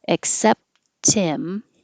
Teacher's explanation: of the T and except connecting to the pronoun him but you can drop the H in him and now the T connects and it sounds like Tim